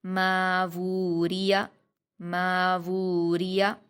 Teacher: ماوو ماوو، را پر حرکت زیر کی اس کو جلدی پڑھیں گے، باریک پڑھیں گے، یا پر بھی حرکت ہے، اس کو بھی جلدی پڑھیں گے، یعنی شروع کے 2 حرف جو ہیں میم اور واو، ان کو 2 حرکات کھینچا جائے گا، اور لاسٹ کے 2 جو ہیں را اور یا، ان کو جلدی پڑھا جائے گا۔